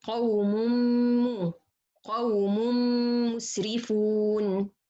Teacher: If you hear, you will find the meme, not anymore noon in this one. So this is إدغام كامل بغنة.